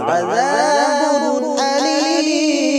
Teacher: তানবিনের পরে হামজা আছে এইজন্য এটা ইজহার করে পড়ব